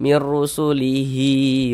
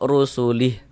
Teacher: kalau diwasalkan baru dibaca panjang berlaku tanda panjangnya itu. Tapi kalau diwakafkan tidak berlaku tanda panjangnya gugur dia begitu. Ah, ini kalau kita berwakaf rasulih tidak berlaku tanda panjangnya tidak berlaku. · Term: mad silah